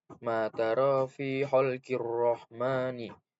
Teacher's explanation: Nah, pada ayat ro atau huruf ro itu terdapat hukum tajwid alif lam syamsiah karena ada alif lam yang sebelahnya terdapat huruf syamsiah yaitu ro, dan cara bacanya alif lamnya tidak dibaca atau tidak terbaca, jadi langsung ke ro-nya